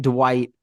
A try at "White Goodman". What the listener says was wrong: It's White Goodman, right? Dwight with a D.